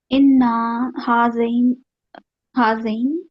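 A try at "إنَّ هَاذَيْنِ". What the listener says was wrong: Good, हाँ रही नहीं हो जाएगा, लेकिन आपका इन्ना, आपने मुंह खोल दिया, छोटा करें नहीं, अभी भी बड़ा है, इन्ना, इन्ना ना जैसे ही निकले जबर लगा के आगे बढ़े, उसको अलिफ बिल्कुल ना दे, इन्ना हारैनी।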